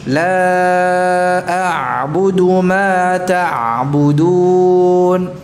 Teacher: Ain itu diucapkan bukan dengan menahan suaranya, mengalirkan suaranya, namun dengan aliran yang sedang. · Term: Bainiyah